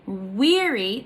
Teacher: in the 2 syllables, the first one is stressed, and the second one is unstressed.